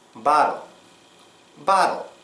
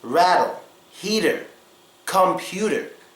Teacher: they're in the middle of the word so they usually make the D sound the soft D sound